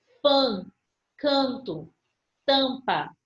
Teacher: a pronúncia da vogal não sai apenas pela boca mas eu sinto a vibração no nariz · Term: as nasais